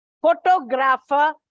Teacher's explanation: Photographer, it is on the second syllable.